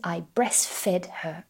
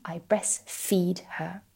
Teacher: if we say fed with a short e this is the past tense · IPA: /e/